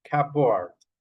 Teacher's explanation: You don't pronounce the P, you pronounce the B, cupboard.